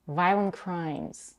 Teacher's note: Notice that both words violent and crimes are stressed.